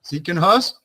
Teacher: We put much more stronger the pronunciation in the beginning of the word than the end of the word.